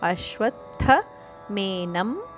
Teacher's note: ಅಶ್ವತ್ಥ ಅಲ್ಪಪ್ರಾಣತಕ್ಕೆ ಮಹಾಪ್ರಾಣಥದ ಒತ್ತು